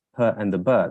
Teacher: in the sounds per and the bur, there is a complete obstruction of the airstream, and then we release the airstream for it to be for the sound to actually actualize. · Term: complete stoppage